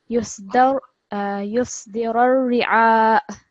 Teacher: we're going to take a sukoon on the hamza. So we're going to slightly have a slight jerk on the end of this